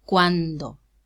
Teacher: it's realized as an occlusive because it's preceded by a nasal